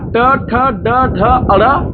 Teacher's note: ऋ र स ट ठ ड ड ड़ इनका उच्चार स्थान मुर्धा होता है